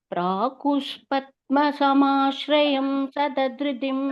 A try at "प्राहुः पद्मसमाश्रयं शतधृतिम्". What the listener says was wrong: प्राहुष இல்ல, प्राहुः எஃப் பத்மா கேட்க கூடாது, பத்மா தான் சொல்லணும். प्राहुः पद्मसमाश्रयं शतधृतिं त्वत्पादपद्माश्रयात्.